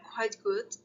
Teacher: if we put them together, quite good, the t sound disappeared. This is assimilation.